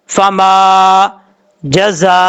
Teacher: یہ جو زا ہے، زا سیٹی کے ساتھ پڑھا جائے گا